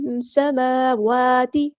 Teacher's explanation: میم اور واو دونوں پہ حرکات آئی ہیں، حرکات مدہ، تو ان کو ایک الف کے برابر لمبا کرنا ہے. سماواتی نہیں پڑھنا، غلط.